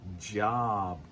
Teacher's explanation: make sure that you're hitting the j, job. Get the d sound first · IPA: [dʒ]